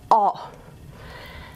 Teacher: you're actually aiming low and pharyngeal down here all right so this is a low vowel and it needs to be really back and it's um into the pharynx so it can do the old gargling to feel where our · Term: cardinal vowel five